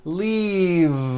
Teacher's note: Keep the voicing going throughout the whole word and voice the V. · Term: voiced V